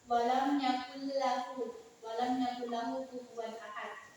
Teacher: Nun mati bertemu dengan la, dibaca dengan tidak berdengung. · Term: idgham bila gunna